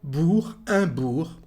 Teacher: you can't hear the letter G at the end. The same thing for bourg.